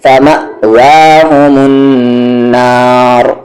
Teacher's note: را کو ہیوی کریں گے، رکنے کی وجہ سے آواز اوپر جا رہی ہے تو ہیوی